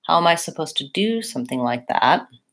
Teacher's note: the main information is about the verb do · In this phrase, I would stress do.